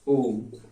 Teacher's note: इस ओ को हम लगभग 3 मात्रा के समय तक बोलें, तब वो हमारा क्या बन जाएगा? प्लुत ध्वनि बन जाएगी। इसी को बोल देते हैं प्लस स्वर।